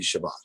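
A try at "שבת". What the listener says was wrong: No, if this was Ashkenazi, if you're teaching Ashkenazi, this will be Shabbos. not Shabbat. Shabbat will be the Sephardi. And then since you don't have the dagesh in the taf here, it would be the stav anyway. So Shabbos.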